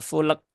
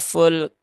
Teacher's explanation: eh syidah dari Kaf dan juga ee Hames dari Kaf ya Kaf dia punya sifat syiddah dan juga hams